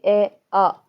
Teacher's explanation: अब स्वरों का उच्चारण जो अ और आ है वो कंठ से बोले जाते हैं।